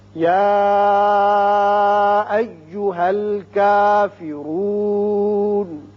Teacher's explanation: اب اس کے بعد کافرون، را کے اوپر پیش ہے، اس کو پر پڑھیں گے. نون زبر ہے، لیکن جب آیت ختم ہو رہی ہے تو ہم نون کو ساکن کر کے پڑھیں گے